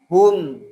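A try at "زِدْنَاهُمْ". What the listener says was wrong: Jangan hum. Maka mimnya nanti monyong jadinya. Hum.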